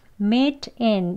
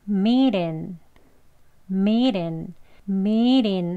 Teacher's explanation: 여기 t를 보시면 t의 앞뒤가 모음 소리가 왔습니다. 이런 경우 원어민들은 soft d 발음을 해요. 부드러운 d지만요. 정말 부드럽게 발음을 하기 때문에 리을 소리에 가까운 발음으로요. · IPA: /miːt ɪn/